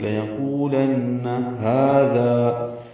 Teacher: لَيَقُولَنَّ لام جلدی سے پڑھیں گے، قو واو مدہ ہے، لن میں نون مشدد پہ غنہ ہے